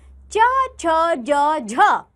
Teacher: मुंह के दो अंग मिलने के पश्चात अलग हट जाते हैं और हवा घर्षण करती हुई बाहर निकलती है वे स्पर्श संघर्षी व्यंजन कहलाते हैं जैसे च छ ज झ